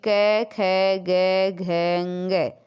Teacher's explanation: ए आ कैवर्ग के जो पांचों अक्षर है तथा विसर्ग का उच्चारण स्थान कंठ होता है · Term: कंठ्य वर्ण